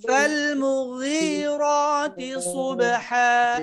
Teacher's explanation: গাইন ইস্তিআলার হরফ খুব নরম ভাবে মোটার সাথেই, যেহেতু গাইনের নিচে কাসরা অপরিপূর্ণ মোটা না হলেও মোটার একটা ভাব কিন্তু থাকবে।